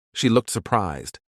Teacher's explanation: the word looked is stressed to create the punchline showing how stress on different words can change the meaning yes